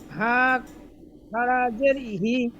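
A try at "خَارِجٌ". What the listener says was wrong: হি বলে ছেড়ে দিলেন কেন? হা খারাজের হি হয় না, হা খারাজের হি টান দিয়ে বলতে হবে। ওই বানান করার সময় টান দিচ্ছেন না, যার জন্য করে গন্ডগোল হচ্ছে আপনার। বানান করার সময় টান দিচ্ছেন না, বুঝতে পারছেন?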